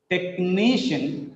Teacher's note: Technician. Three syllables are there. Second from last is stressed. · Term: penultimate syllable is stressed